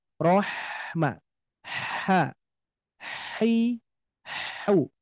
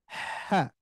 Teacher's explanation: Nah, bunyinya rohwah mengalir dan juga sifat huruf ha ini bukan mendesis, ingat ya, bukan mendesis tapi bunyi udara, bunyi udara.